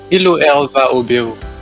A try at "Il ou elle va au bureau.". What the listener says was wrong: Okay, perfect.